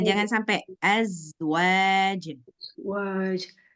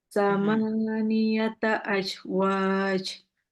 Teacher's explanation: ingat zanya jangan sampai ada pantulan kayak qalqalah tanpa disengaja